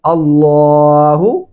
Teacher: اللہ یہاں پہ لام موٹا پڑھیں گے